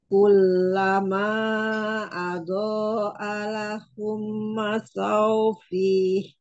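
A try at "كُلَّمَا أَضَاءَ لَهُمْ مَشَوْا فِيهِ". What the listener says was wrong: Umi tambah lagi abonya itu lamanya ya, mad wajibnya ya.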